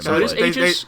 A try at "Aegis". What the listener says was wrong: Yeah, I think it's supposed to be like an E sound, not an A sound.